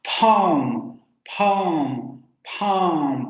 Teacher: la boca está en su máxima apertura y como la lengua se echa hacia atrás, entonces se genera esta sensación como de hueco, de un hueco muy amplio.